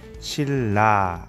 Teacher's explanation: 뒤에 있는 리을에 의해서 앞에 있는 니은이 리을로 바뀌었어요. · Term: 역행적 유음화